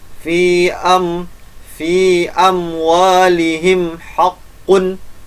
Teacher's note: cara bacanya jelas tanpa didengungkan. Itu izhar syafawi.